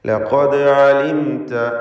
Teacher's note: ദാലിൻ്റെ സുക്കൂൻ ഖൽഖല സുഗ്റ നൽകി ശബ്ദം ഹറക്കത്ത് പോലെ ചലിപ്പിച്ച് വ്യക്തമാക്കുക